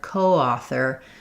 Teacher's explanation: In coauthor, this one's going to get a little bit more stress because my coauthor, it's going to have secondary stress while author is going to have the main stress. And you're going to end up with a little bit of vowel to vowel linking there with coauthor.